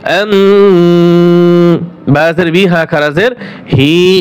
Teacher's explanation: মিম সাকিনের পরে বা আসিলে উক্ত মিম সাকিনকে ইকফার সহিত গুনাহ করিয়া পড়িতে হয় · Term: ইকফায়ে শাফি